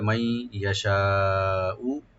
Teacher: মাই নুন সাকিন পরে ইয়া আসছে ইদগাম উইথ গুন্না হবে , মাই ইয়াশাউ, ইয়া ওপেন রাখবেন, শিনটাকে ওপেন করে চার আলিফ